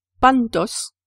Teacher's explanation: Sur les deux derniers cas, il faut remarquer que c'est la syllabe finale qui est accentuée.